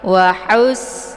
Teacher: pangkal lidahnya itu agak menghempit ke Batang leher waus ya dia tempat keluarnya di tenggrokan bagian tengah sejajar dengan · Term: ha pedas